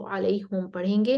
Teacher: वो हा पर दम्मा देते हैं, वो अलैहिम नहीं बल्कि अलैहुम पढ़ते हैं